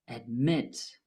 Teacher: Admit has two syllables, though the last syllable is stressed.